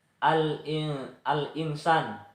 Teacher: Terdapat hukum bacaan alif lam qamariyah karena huruf alif lam bertemu huruf hamzah, dibaca secara jelas.